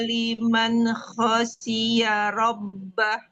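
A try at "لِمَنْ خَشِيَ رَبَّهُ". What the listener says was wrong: Ya, latihan huruf H biar tajam. Huruf tebalnya bagus, tapi diingat ya, yang ditebalkan apa aja. Nah, kemudian tebalkan saat baca. Karena bedanya jauh. Kalau kita tebalkan sama kita nggak tebalkan, itu bunyinya sangat sangat signifikan. Ya, sangat jauh.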